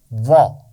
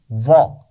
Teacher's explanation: زبان کی نوک سامنے نہیں لگانی، یہ دال کی آواز نہیں ہے اور ذال کی آواز بھی نہیں ہے، کنارے پر لگائیے زبان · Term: واد